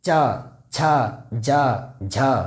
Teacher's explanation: ई जैसे में चवर्ग, च, छ, ज, झ, इन सारे वर्णों का जो उच्चारण होता है हमारा तालु से ही होता है।